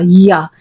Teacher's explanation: या अदा करने में जुबान का बीच वाला हिस्सा थोड़ा सा ऊपर उठेगा